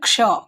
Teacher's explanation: Actually इसको हम लोग छ नहीं पढ़ते, इसमें थोड़ा सा क का उच्चारण होता है, इसलिए यहाँ पे के लिखा हुआ है, ठीक है? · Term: संजोगी छ